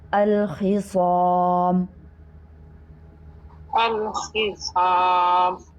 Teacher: الخصام میں خوا بھی پور ہے، حروف مستعلیہ میں سے صاد بھی، اور ساتھ الف بھی پور ہوگا کیونکہ الف سے ماقبل صاد آ رہا ہے